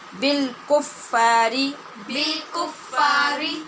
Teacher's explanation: یہاں را باریک ہوگی، زیر والی را ہے